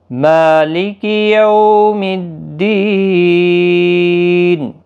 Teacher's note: یو واولین ہے، تھوڑا نرمی کے ساتھ آدھے الف کی مقدار کے برابر کھینچیں گے۔ دی یا مدہ ہے، 1 الف کی مقدار کے برابر کھینچیں گے، اور وقف کی صورت میں یہاں پر بھی وقف بالاسکان ہوگا، 3 سے 5 الف کی مقدار کے برابر کھینچ کر وقف کریں گے۔